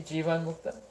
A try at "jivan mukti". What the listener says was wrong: Jivan Mukti, not Mukta.